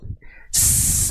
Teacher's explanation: setelah dia berdesis, dia akan mengalir suara dan nafas di saat yang bersamaan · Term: sifat saofir